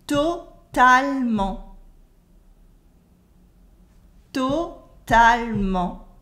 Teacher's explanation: We never say totalement. We cut the E and say totalement. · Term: cutting the E